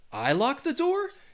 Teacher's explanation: you're saying a statement but you're using that rising intonation which means it's a question